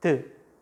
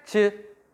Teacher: 드보다는 즈가 조금 더 뒤에서 공기가 막히는구나